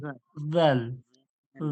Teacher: জিহ্বার আগাটা সামনে দাঁতের আগাতে লেগে বলবো। জিহ্বার আগাটা মানে জিভের আগাটা সামনে দাঁতের আগালে লাগান, উপরের দাঁতের আগা, উপরের জাল উপরের দাঁতের আগাতে লাগিয়ে এবার বলুন জাল, জাল।